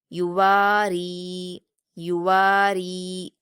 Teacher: रा पर भी या मदद्दा है। इसको भी दो हरकात खींचेंगे।